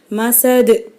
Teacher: அப்புறம் இங்கே வந்து தோ ஜேரில் முடிஞ்சிருக்கு, தன்வீனில் முடிஞ்சிருக்கிறதுனால நம்ம சுக்குன் வச்சு நிறுத்தணும். சுக்குன் பெற்ற தால் வந்து கல்கலாவுடைய எழுத்து, அப்போ இங்கேயும் வந்து மசது அப்படின்னு அசைச்சி நம்ம நிறுத்தணும்.